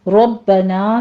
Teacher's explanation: ربنا میں رو مفخم پڑھتے ہوئے با کے اوپر تشدید ادا کریں گے، نا میں الف مدہ ہے۔